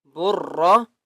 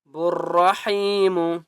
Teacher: با کو را کے ساتھ ملانا ہے، الف اور لام کو نہیں پڑھنا،